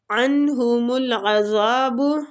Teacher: ادھر نون ساکنہ کا ہم اظہار اس لیے کر رہے ہیں کہ آگے ہا اخص الحلق سے جو نکل رہا ہے